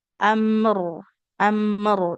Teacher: Huruf mim dan huruf ra ini ternyata kalau dari aliran suara punya sifat yang sama. Sama-sama tawas aliran suara yang per tengahan. Jadi durasi mengalirkan suara mim dan ro sama. · Sama-sama tawas aliran suara yang per tengahan. Jadi durasi mengalirkan suara mim dan ro sama. Sama-sama tetap kita alirkan suaranya. Tapi sebentar ya.